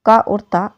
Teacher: क और त अल्पप्राण और अघोष ध्वनि है